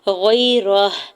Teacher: یا ساکن سے پہلے غین کے اوپر زبر ہے، یا لین ہو رہا ہے، نرمی سے موڑتے ہوئے ادا کرنا ہے، کھینچنا نہیں ہے۔